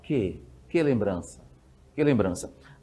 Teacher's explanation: Às vezes, é tão fraco o som, é tão átono, que você não fala que, você fala que, quase com som de i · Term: monossílabo átono